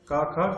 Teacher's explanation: क ख ग घ ये सभी कंठ्य ध्वनि